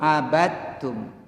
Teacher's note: Dalnya masuk ke ta. Jadi tidak ada qalqalah.